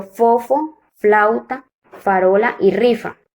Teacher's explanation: los órganos que intervienen en la producción del sonido son el labio inferior y los dientes superiores